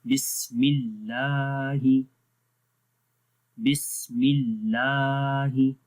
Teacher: اس کو ایسے نہیں پڑھیں گے بسم اللہ، تو غلط ہو جائے گا، ٹھیک ہے. اللہ کے نام سے پہلے جب زیر آتی ہے تو باریک پڑھتے ہیں اللہ کا نام،